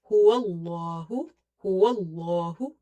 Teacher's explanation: You will stretch the lam because of the vertical fatha. Okay, and you will make lam heavy as well because there is a fatha before it